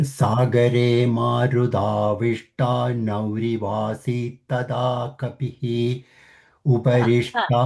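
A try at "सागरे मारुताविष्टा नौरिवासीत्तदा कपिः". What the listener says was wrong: That kapihi should not happen. Kapihi, rasvayendu. Vasit, C will go longer. Uparish, the sh half is murdhani.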